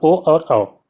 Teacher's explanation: इनको उच्चारित करने के लिए आपको जीभ के पिछले हिस्से का प्रयोग करना होता है। तो ये हो जाते हैं पश्च स्वर।